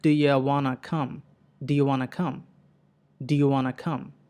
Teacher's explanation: డూ యూ వాంట్ టు కమ్ అనేది అంత క్లియర్గా పలకకుండా డూ యూ వానా కమ్, డూ యూ వానా కమ్ అని షార్ట్గా పలికేస్తారు.